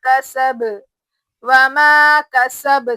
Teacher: सीन की आवाज सीटी की जैसी सीटी की आवाज जैसी आना एकदम शार्प